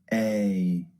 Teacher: A is actually two vowels pushed together to make one sound.